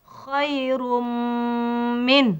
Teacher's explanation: tugasnya ialah hendaklah diidghamkan serta didengungkan masuk Idgham dan ada dengung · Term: idgham maal ghunnah